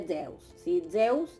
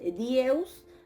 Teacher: la dental sonora en contacto con la yod, y el resultado entonces es una zeta